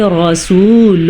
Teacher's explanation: را کو ہم نے پر پڑھا کیونکہ را کے اوپر زبر ہے تو پڑھیں گے رسول۔